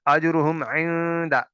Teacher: نون ساکن کے بعد دال ہے، یہاں پہ اخفا ہوگا